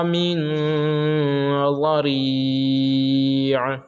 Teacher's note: من پہ اخفا ہوگا، اس لیے کہ نون ساکن کے بعد حروف اخفا میں سے ضاد آ رہا ہے